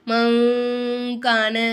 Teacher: முக்கால மறைச்சு குன்னா செஞ்சு ஓதணும்